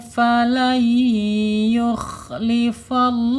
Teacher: Ah ya ikhfa hakiki ya ee panjang ditahan dua harakat ya. Ditahan dua harakat dibaca samar